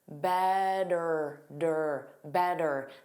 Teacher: a T between vowel sounds wa and then vowel sounds, the T becomes the flap T, which is that soft D